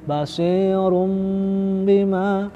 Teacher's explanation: Itu bacaan iklab ya. Dengung. Tempo dengungnya sekali lagi 2 harokat.